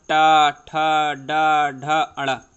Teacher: ये टा वर्ग के जो वर्ण होते हैं ये मूर्धन्य की सहायता से बोले जाते हैं